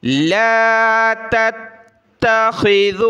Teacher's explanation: ذال پر زبان نکالیں، خا کو موٹا کیا، اس تا کو سخت کرنا ہے تشدید کی وجہ سے